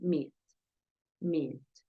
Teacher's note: Yo estoy exagerando un poco la alargación